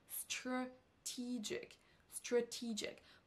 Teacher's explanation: Le mot strategic s'accentue sur la deuxième syllabe et attention, on ne dira pas stratégique. On n'entend pas un son A sur la première syllabe mais un son E.